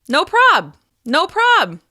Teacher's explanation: once again you'll stress prob and use friendly intonation